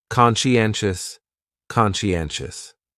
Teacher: conscientious has 4 syllables, and the stress is on that third syllable